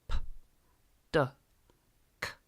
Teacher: Some of them are caused by completely blocking off the airflow and then letting the air pop out very quickly like a little explosion. These are sounds such as p, d, k.